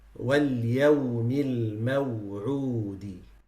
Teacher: that waw is produced by circling the lips forward and raising the furthest part of the tongue